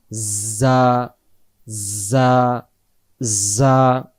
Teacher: যা অক্ষরের সামনের নিচের দাঁতের আগা থেকে শীষ দিয়ে পড়তে হয়